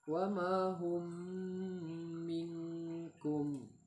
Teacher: apabila terdapat mim mati bertemu dengan huruf mim, praktek bacanya disertai tempo dengan dengung atau gunnah 2 harakat. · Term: idgham mimi